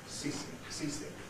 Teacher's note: strictly ceasing has got a voiceless s in the middle